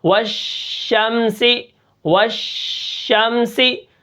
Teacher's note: جب ہم شین کو ادا کرتے ہیں تو منہ کے اندر آواز پھیل جاتی ہے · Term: تفشی